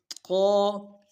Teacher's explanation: ق موٹا حرف ہے، موٹا اور پر پڑھیں گے، ہمیشہ زبان کو اوپر تالو سے لگائیں گے اور زبان کا بیچ بھی تالو کی طرف اٹھائیں گے